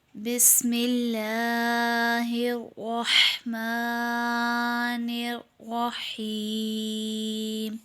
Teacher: لام سے پہلے زیر ہے، اس لیے اسے باریک پڑھیں گے